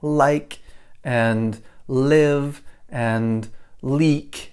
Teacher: the L comes up and touches the teeth